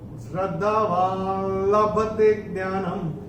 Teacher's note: न के ऊपर जो ये अनुस्वार आ रहा है चरण की समाप्ति पे है, इसीलिए इसका उच्चारण म होगा